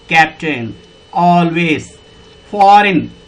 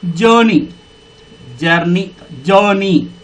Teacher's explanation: ఇదంతా కూడా స్టార్టింగ్లోనే స్ట్రెస్ మార్కును పలుకుతుంది కాబట్టి, స్టార్టింగే దీర్ఘాక్షరం పలుకుతుంది కాబట్టి